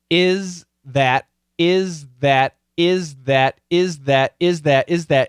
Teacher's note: that but the faster we say it this s which is a strong sound is going to kill the th which is a weak sound